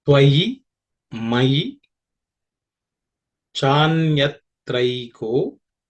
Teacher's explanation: The first line, Tvayi Mayi Chanyatraiko, is reasonably simple. There are no aspirated consonants.